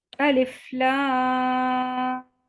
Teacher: اب الف کو بغیر کھینچے پڑھنا ہے، لام کو 6 کاؤنٹس کھینچنا ہے اور بیچ میں غنہ کرنا ہے کیونکہ ادغام شفوی کا قاعدہ ہو رہا ہے اور میم کو 6 کاؤنٹس کھینچنا ہے. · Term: مد لازم حرفی مسکل